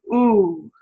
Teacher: the tongue is much tenser and we consider o a high back rounded vowel